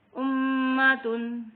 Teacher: میم پہ شد پڑا ہے تو یہاں پہ غنہ ہوگا، ایک الف برابر